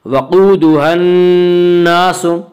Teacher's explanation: وقودها الناس، قاف کو پر پڑھیں گے۔ قاف حروف مستعلیہ میں سے ہے۔